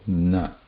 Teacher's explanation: Na, dantya, the tip of the tongue touches the dantya, the na there, like the tha, da, dha. But here, the air has to pass through nose also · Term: anunasika